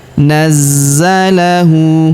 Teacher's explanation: Huruf za kita tahan dan kita tekan karena terdapat tanda tasydid di atasnya. Nazzalahu. Huruf hu kita panjangkan dua harakat karena berharakat u terbalik seperti ini ya.